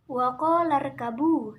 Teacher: ada hukum bacaan Mad Thobi'i yang terletak pada huruf qaf karena huruf mad Alif didahului oleh harakat fathah dibaca panjang satu Alif